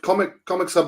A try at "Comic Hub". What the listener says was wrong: Comic Hub. There's no S.